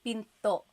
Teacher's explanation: Do you hear the glottal stop when I say pinto?